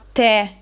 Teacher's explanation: Se invece metto l'accento, che in questo caso è grave, dobbiamo aprire il suono della e, che diventa e.